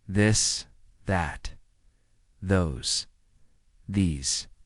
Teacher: let your tongue touch your teeth lightly but use your voice.